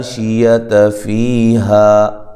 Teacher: شیۃ، کسی کو لمبا نہیں کرنا، فی یا مدہ ہے، ہا الف مدہ ہے، دونوں کو ایک الف کی مقدار کے برابر لمبا کرنا ہے